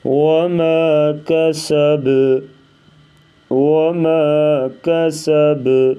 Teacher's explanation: ادھر با جو ہے ساکن ہے تو یہاں پر قلقلہ کریں گے